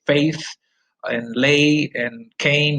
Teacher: the tongue glides from mid front to high front when you pronounce it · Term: diphthong